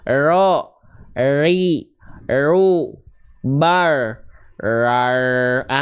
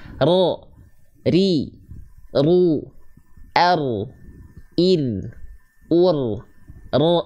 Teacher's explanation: getarannya harus tetap ada tegas lugas jelas Walaupun dia getarannya Enggak banyak ro ri ru R Ir ur R sambil diikutin di rumah